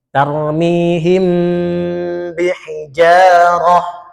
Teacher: intibaqu syafataini bibir atas dengan bibir bawah rekat sempurna